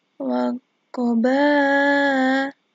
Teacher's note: Nah, di sini ba'i disebut mat wajib mutasil, dibaca panjang 5 harokat.